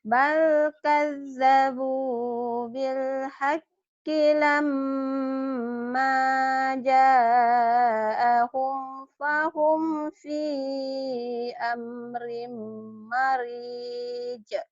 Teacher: Lama mimnya gunnah, ma-nya mad tabi'i. Bukan lama, lama ma-nya ada madnya.